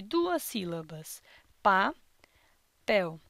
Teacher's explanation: Já na palavra papel, podemos encontrar um total de duas sílabas, pa-pel. E nesta palavra, a sílaba tônica é a sílaba pel